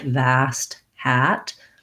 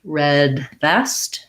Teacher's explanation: the a is more open and the e is a more central vowel